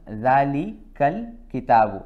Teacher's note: There is no need for this Hamza. So this Hamza is just written as an alif, but it is not read or not pronounced. So it becomes Dhalikal kitabu.